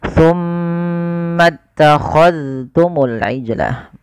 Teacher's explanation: Ini jangan summa takhadtum, jangan diidghamkan ke huruf ta, tapi zalnya ditampakkan dengan jelas